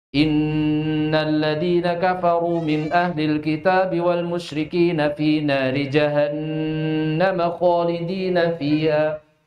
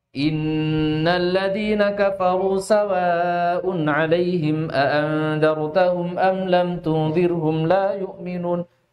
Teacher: Dan berikan perhatian di dalam pembacaan gunah pada nun dan mim bertasydid.